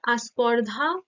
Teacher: স্পর্ধাটাকে অনেক সময় আস্পর্ধা হিসেবে উচ্চারিত হয় এখানে আ বলে এই এই স্বরধ্বনিটা আগমন ঘটেছে এখানে আদি স্বরাগম